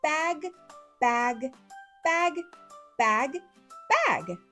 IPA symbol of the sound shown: g